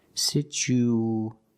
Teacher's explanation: So we have an extra sound. It's like a w sound, like a W, to link these two vowels. Situation. Because the situation is even less simple than you think. · we need to link the U with the A. So we have an extra sound. It's like a w sound, like a W, to link these two vowels.